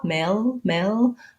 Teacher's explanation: l but i don't go right into the l male male i don't use a light front l i have to do kind of a schwa or an uh sound before my l and that will give me the dark l so the back of my tongue stays down in the central